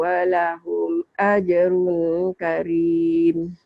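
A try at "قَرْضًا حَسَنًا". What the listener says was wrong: Tapi di sini idharnya jangan ditahan ya, Makci ya. Ya, qardan idhar. Jangan ditahan.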